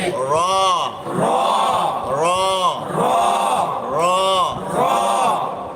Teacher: জিহ্বার আগার অপর পিঠ তার বরাবর উপরের দাঁতের মারি হইতে